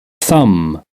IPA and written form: θʌm (thumb)